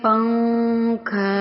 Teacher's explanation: ناک میں تھوڑی دیر آواز کو چھپاتے ہیں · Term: اخفا